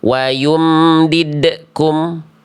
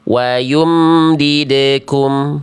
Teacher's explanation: Dilafalkan dengan pantulan sudah berarti ya, tapi pantulannya tertahan.